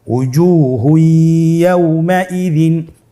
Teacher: তানবিনকে পরবর্তী হরফের সাথে মিলিয়ে গুন্নার সহিত পড়তে হবে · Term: ইদগামে বাগুন্না